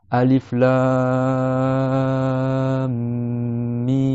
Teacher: Donc le lam, il faut que tu prolonges 6 temps, c'est-à-dire le temps de déplier 6 doigts.